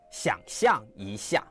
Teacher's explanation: Two third tones at the start, neither rises. Both stay creaky and low.